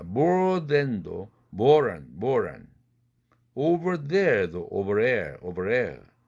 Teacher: R 다음에 느가 온 경우도 역시 탈락됩니다.